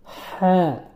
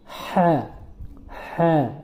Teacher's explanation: হাটা হলকের মধ্যখান থেকে উচ্চারিত হয়। একটু গলার ভিতর চাপিয়ে